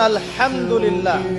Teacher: হা এর মাখরাজ কোথায় কন্ঠনালী মাঝখান থেকে